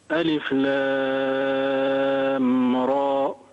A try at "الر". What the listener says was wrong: ما في همزة. ألف لام را بدون همزة، را ماشي وتمد ست حركات.